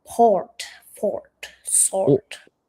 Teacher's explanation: If you're doing RP, we generally don't pronounce the R, the R sound.